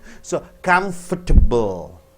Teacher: The E is squeezed out, A is squeezed out, O is squeezed out.